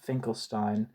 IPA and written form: ˈfɪŋkəlstiːn (Finkelstein)